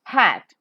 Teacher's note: palate is raised to shut off the nasal passage of air the air that is coming out from the glottis which is an opening between the two vocal chords in the voice box comes out with audible friction · are wide apart it's a voiceless sound so as in h-a-t hat is a voiceless glottal fricative